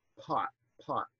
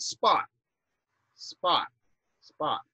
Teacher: they get unaspirated in other positions like spot or apple or retina or record record um so that difference is entirely predictable in english we